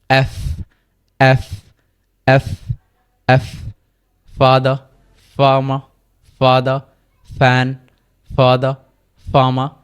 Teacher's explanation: এটার উচ্চারণ হচ্ছে আমাদের যে দন্ত রয়েছে উপরের দাঁত এবং নিচের ঠোঁট, উপরের দাঁত এবং নিচের ঠোঁট, এই দুটোর মাধ্যমে এটা উচ্চারণ হবে